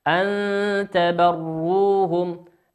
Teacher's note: لننظر أعزائي المشاهدين إلى حرف النون في كلمة أن، نجده حرفا ساكنا، نون ساكنة أتى بعدها حرف التاء، والتاء من حروف الإخفاء